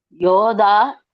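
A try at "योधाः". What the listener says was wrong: யோதாஹா. விசர்க்கம் இருக்குல்லம்மா? அந்த விசர்க்கத்தை சேர்த்து சொல்லணும். பகுவச்சனம் வரும்போது அந்த விசர்க்கம் வரும், அதை சேர்த்து சொல்லணும். யோதாஹா.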